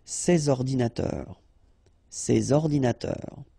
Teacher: So you should make the liaison between S and O